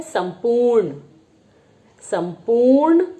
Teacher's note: हम संपूर्ण में आधे म का आधे म की ध्वनि सुनाई देती है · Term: अनुस्वार